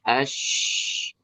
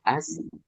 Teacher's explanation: Ini kalau posisi lidahnya adalah tengah lidah. Tengah lidahnya naik ke langit-langit, tapi hanya terangkat saja, tidak sampai nempel. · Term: shin